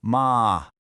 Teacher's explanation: Start low and go high · It sounds a lot like how your voice naturally rises in English when you ask a question with a bit of surprise, like, you did? It starts in the middle of your vocal range and just goes up smoothly. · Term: second tone